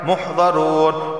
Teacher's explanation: جمیع لدینا، نون علی زبرنا ایک الف کے برابر کھینچ کر پڑھا جائے گا۔ محضرون، واو سے پہلے پیش آیا ہے تو اسے بھی ایک الف کے برابر کھینچ کر پڑھا جائے گا